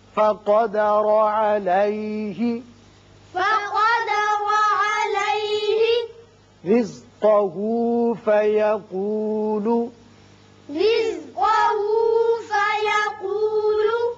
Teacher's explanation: را باریک ہوگا اس لیے کہ نیچے زیر ہے. جب بھی زیر آئے را کو باریک پڑھتے ہیں.